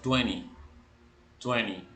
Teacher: en el inglés británico suena Twenty así como nosotros lo vemos en el inglés americano la segunda t no se pronuncia en la mayoría de acentos americanos